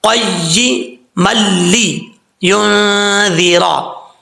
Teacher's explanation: اب میم اور لام کے اوپر جو ہے ادغام ہو رہا ہے، ادغام یرملون، دو زبر کے بعد والا. یہاں دو زبر کی تنوین کے بعد لام آ رہا ہے، یہاں پہ ادغام تو ہوگا لیکن غنہ نہیں ہوگا